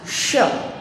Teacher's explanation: जब वो तालू में सट के बुलाया जाता है, जीभ और तालू के बीच से उसकी हवा निकलती है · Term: तलाव्य श